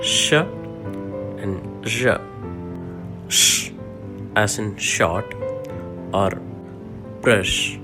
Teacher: Palato-alveolar sounds are produced by the blade of the tongue against the alveolar ridge and the hard palate. Examples are sh and zh.